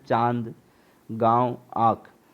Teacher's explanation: अनुनासिक का उच्चारण नाक और मुंह से किया जाता है